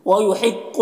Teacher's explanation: القاف حروف مستعلیہ میں سے پر پڑھیں گے۔